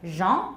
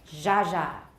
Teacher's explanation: And then this symbol that looks sort of like a three with a point over here is zh. It's just the voiced version of sh.